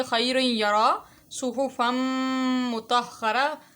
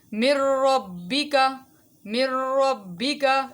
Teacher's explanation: ان میں آواز ناک کے اندر ٹھہری ہے اور من ربک کے اندر آواز جو ہے وہ ناک کے اندر نہیں ٹھہری تو اس کو ہم ادغام بلا غنہ بولیں گے.